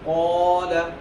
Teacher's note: حروف مستعلیہ کو پر کریں گے ساتھ ہی ساتھ الف بھی پر ہو جائے گا